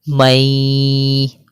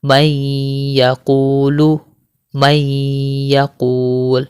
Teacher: بسم اللہ الرحمن الرحیم، میم نون یا زبر مئی، اس طرح ہم غنہ کے ساتھ ادغام کرتے ہیں، ٹھیک ہے۔ غنہ بھی کر رہے ہیں ہم اور ادغام بھی کر رہے ہیں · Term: ادغام مع الغنہ